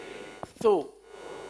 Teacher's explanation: سو میں پہلے تو زبان کا سرا لگ رہا ہے اس کے اپنے مخرج پر، یعنی اوپر کے دانتوں کے اندرونی کنارے پر، اور لگنے کے بعد فوراً ہی ہونٹ گول ہو رہے ہیں